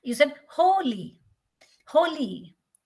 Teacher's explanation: the ho is stressed l y is unstressed